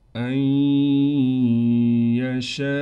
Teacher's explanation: نون کو ہم ادغام کے قاعدے سے ختم کر دیں گے، حمزہ کو یا سے ملائیں گے غنے کے ساتھ